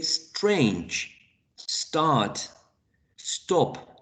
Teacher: For example, we can say strange, start, stop in English, right? We can start with an initial s followed by a plosive t.